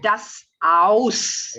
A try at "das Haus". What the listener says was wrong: Don't forget the H, yeah.